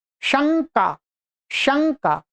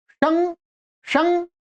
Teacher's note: ध्यान रखेंगे शं शं आप देखो शं शं का श न बीच में आता है। जब भी आप उच्चारण करेंगे तो न की ध्वनि सुनाई पड़ती है। जो नासिका से और कंठ से बोली जाती है।